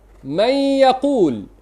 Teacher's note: Tidak ada kerja bagi lidah dalam ghunnah. Ghunnah itu daripada khayshum, bukan daripada lidah dan gigi.